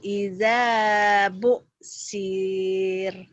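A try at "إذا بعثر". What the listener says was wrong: Pendek. Kenapa panjang? Ya'lamu idza bu'thir gitu ya. Pendek, bu'sir. Jadi pendek.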